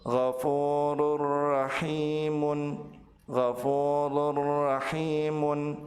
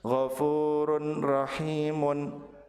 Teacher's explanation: Apabila tanwin bertemu dengan huruf ra, maka tanwin dilebur ke huruf ra tanpa ditahan dan tanpa disertai dengan gunnah.